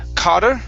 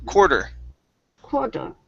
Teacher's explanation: curve your tongue up for that first R